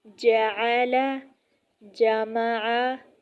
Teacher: ایک دفعہ پھر سمجھ لیں کہ وسط زبان اور اس کے مقابل اوپر کا تالو ہے اور اس سے یہ حروف ادا ہوتے ہیں۔ جیم یعنی جب وسط زبان جب بالمقابل اوپر کے تالو سے لگے تو اس سے جیم ادا ہوتا ہے